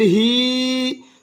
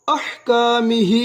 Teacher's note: 4 حرکات لمبا ادا کریں گے. چھوٹی مد ہے